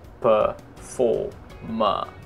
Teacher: R sampai 3 dalam satu kata tapi nggak dibaca sama sekali